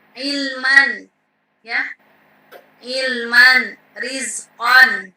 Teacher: terlihat dalam keadaan wasol atau tidak dimatikan bacaannya, ya. Misalnya ilman, ya, ilman, rizqan, ya, itu ketika dalam kondisi wasol, ya. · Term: tanwin